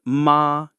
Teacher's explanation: flat and steady, like you're a robot saying ma.